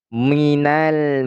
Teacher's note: ro dibaca secara tafkhim ataupun tebal